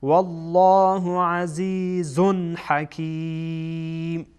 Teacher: عزیزون اینجا اظهار میشه، تنوین اظهار میشه به خاطری که بعد از آن ها آمده، ها از حروف اظهاره